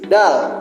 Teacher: bunyi ujung lidah dan gusi letupan bersuara tipis · bunyi gigi depan gesekan bersuara tipis